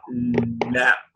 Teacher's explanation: its articulation point is in the front edges of the tongue